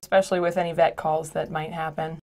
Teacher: She cuts off the E at the beginning and she says specially, specially. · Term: spoken reduction